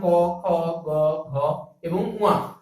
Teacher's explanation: যে সকল ব্যঞ্জন ধ্বনি উচ্চারণের সময় জিহ্বামূল কণ্ঠ স্পর্শ করে তাকে বলা হয় কণ্ঠধ্বনি